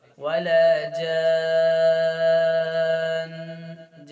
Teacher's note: मद्दे लाजिम है, छः अलिफ के बराबर खींचना, और जन इस तरह स्टॉप नहीं करना, जन नून का गुन्ना करके स्टॉप करेंगे आप।